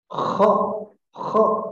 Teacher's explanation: Huruf kha ada di pangkal tenggorokan.